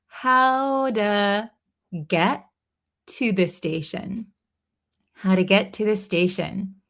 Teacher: this T in to becomes a flap T